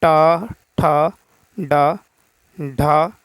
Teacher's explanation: तो जीभ जो है इसमें थोड़ा ऊपर की ओर मुड़ा जाएगा मूर्धन्य में।